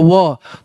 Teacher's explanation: फिर देखिए दंतोष्ट, दंतोष्ट मतलब कि भी दांत से भी और ओठ से भी, जैसे कि व जो होता है ना, आप व बोल के देखो व, तो व जो है ना भाई सब दांत से बोला जाता है और ओठ के से भी बोला जाता है, इससे बोला जाता है इसको दंतोष्ट, है ना।